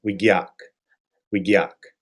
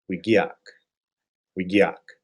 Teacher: The K ends tight, but ia is a cluster of two vowels called a diphthong. These are combined as one sound. So this is all one syllable, gyak.